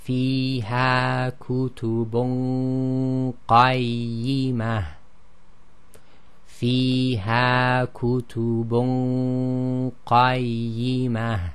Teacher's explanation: although we're lifting the back of the tongue, we're going to the articulation point of the qaf, and that's what's giving the heavy ghunna. And again, it's held in the nasal passage.